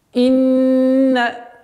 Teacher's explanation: Удвоение в размере двух огласовок